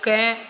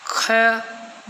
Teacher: क कम वायु का प्रयोग हो रहा है, ख ज़्यादा समय लग रहा है। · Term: अलग प्राण